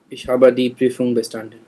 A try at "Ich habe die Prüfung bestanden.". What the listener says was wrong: Yes.